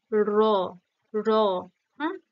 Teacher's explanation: স্থান অনুযায়ী কি হবে সেটা র র আছড়ে পড়ছে তাই না র মূর্ধাতে গিয়ে তবেই নিচে আছড়ে পড়ছে তো যেহেতু মূর্ধাতে গিয়ে স্পর্শ করছে তাই বলা যায় · তারিত যে একটা তারণার সৃষ্টি করে তার ফলে তৈরি হয়